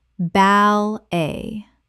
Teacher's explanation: Two syllables with the t completely silent.